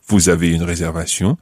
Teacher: raising your voice at the end, just using the statement form